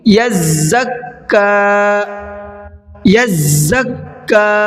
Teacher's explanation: زا پہ رکنا ہے، ڈبل پڑھنا ہے زا کو بھی